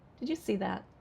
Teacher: I don't want to say it directly, so I asked a question with falling intonation.